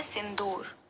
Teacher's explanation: सिंदूर में भी द में हम जोर डाल रहे हैं